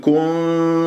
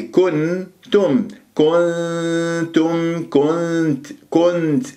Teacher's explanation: وإنك وإن كنتم، نون شوف النون الساكنة ما بين ضمة الكاف والتاء، والنون الساكنة جاء بعدها تاء، فلازم أنا أجيب إخفاء مع التاء، ولا أضم الشفاه في النون